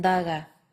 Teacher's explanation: D as in daga. Pronounced with the tip of the tongue against the teeth